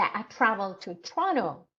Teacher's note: you put in stress on Toronto because Toronto actually is the key word in the sentence